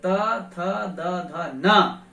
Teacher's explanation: इनका उच्चारण हम दांत से ही करते हैं, जीभ दांत तक जाती है, तब इनका उच्चारण स्थान होता है।